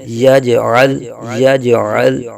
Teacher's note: جیم ساکن میں قلقلہ خوب ظاہر کریں گے، جیم حروف قلقلہ میں سے ہے۔